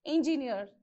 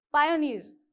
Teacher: is engineer okay engineer so since it is saying last syllable you have to keep the stress mark on the last syllable